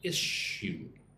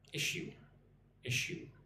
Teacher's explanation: going from the S sound like a snake to a sh sound